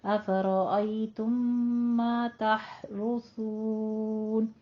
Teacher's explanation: تم ما میں ادغام شفیع کرنا ہے